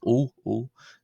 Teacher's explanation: This is like the O in the English word old, so O, O. It's about twice as long or double as the Coptic short O, so it's a long O in effect